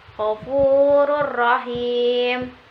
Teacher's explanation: kedua huruf hijaiyah tersebut seakan-akan diberi tanda tasjid dengan tanpa diikuti suara berdengung atau gunnah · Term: idgham bila gunnah